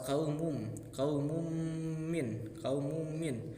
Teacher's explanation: di sini ada tanwin bertemu dengan mim atau yang disebut dengan idgham bigunah